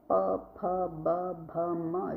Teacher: जब हम इनको बोलते हैं तो होठ आपस में एक दूसरे से टच होते हैं। प फ ब भ म जो दोनों होठ एक दूसरे से टच होते हैं तो उसको ओष्ठ बोलते हैं। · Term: ओष्ठ व्यंजन